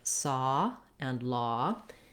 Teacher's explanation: It gives you more time to form that vowel. The ah vowel is rounded, but not so round as an O, and it's open, but not so open as an ah.